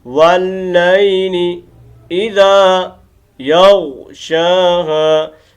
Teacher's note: واللیل لی لمبا نہیں کرنا، یہ بڑی غلطی کرتے ہیں، یہاں لمبا کر دیتے ہیں، یہ غلط ہے. واللیلی نہیں کرنا.